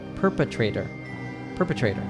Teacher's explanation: it turns into a flap T, which sounds like a soft D sound